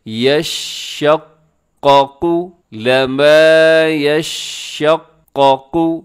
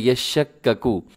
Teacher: یشقق، لما یشقق، اسے یشککو نہیں پڑھنا. ہمارے ہاں کیا ہو جاتا ہے کہ اکثر قاف کو کاف کر دیا جاتا ہے